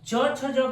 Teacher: यह तालु से बोला जाता है, इसीलिए हम इसे तालव्य कहते हैं।